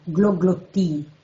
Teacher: la doppia dentale occlusiva sorda T e alla doppia vocale I, forma una sequenza molto singolare